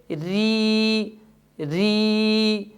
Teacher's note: اب اس مثال میں صرف اور صرف زبان کی نوک لگ رہی ہے جس کی وجہ سے یہ حرف باریک ادا ہو رہا ہے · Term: باریک را